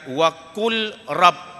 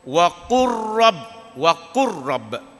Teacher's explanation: apabila lam bertemu ra, dia bagi idgham, dia masuk idgham, masuk kepada ra.